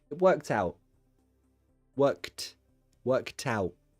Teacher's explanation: i glottalised the t in out